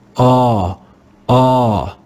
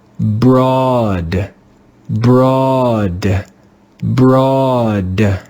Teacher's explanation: In this word, the digraph does not sound like OA in road. Here, the digraph sounds like the 5th sound of the English letter A, the rounded A